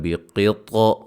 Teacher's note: قاف کو موٹا، قا کو موٹا اور طا پہ قلقلہ بھی کریں گے